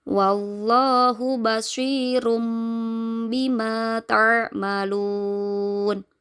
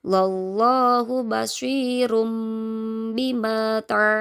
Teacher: itu Apabila ada nun sukun atau tanwin bertemu dengan huruf ba cara membacanya dengan mengubah suara nun sukun atau tanwin tadi menjadi suara huruf mim · Dhammah tanwin bertemu ba, suaranya menjadi suara huruf mim. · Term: hukum bacaan iqlab, iklab